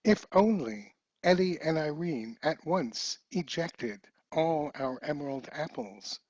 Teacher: every word in this poem starts with a vowel which of course is you have to pronounce with a glottal stop